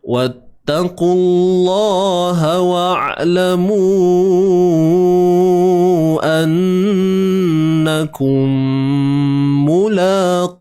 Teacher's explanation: Mu kita panjangkan 4 ataupun 5 harakat. Ni alif ni simbol mad bertemu dengan hamzah kan. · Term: mad jaiz munfasil